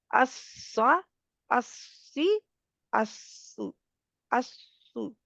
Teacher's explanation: सीटी भी आ रही है और इत्तेफाक भी हो रहा है, प्रेशर पूरा होल्ड है क्यों? क्योंकि ज़ुबान की नोक भी आगे से उठी हुई है, ठीक है?